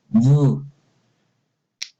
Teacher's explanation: It's voice because you put your finger on your throat and you clearly feel voice because there is a vibration. V. You feel The air is being squeezed, passing through your lower lids and upper teeth. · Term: phoneme V